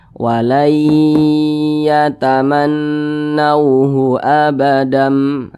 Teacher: Kemudian didengungkan. Didengungkan itu suaranya kita tahan atau kita panjangkan kira-kira 2 harokat. 2 harokat atau kira-kira 2 ketukan.